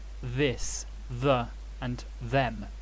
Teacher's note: it's never pronounced unvoiced like in thin it's always voiced as in this